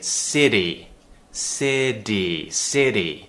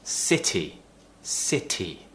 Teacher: you don't pronounce it as a d which is what Americans do